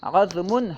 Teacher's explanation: اسے عظم ضا کے ساکن کے ساتھ پڑھنا ہے، اسے فتحہ نہیں دینا ہے، یعنی عظم نہیں پڑھنا ہے، ٹھیک ہے۔